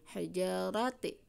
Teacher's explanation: Nah, ja di sini matobi'i ya, alif dirinya fathah, 1 ketukan, dua ketukan, 1 ayunan. Hijarati, ra-nya cara pembacanya tebal atau tafkhim karena harokat ra-nya fathah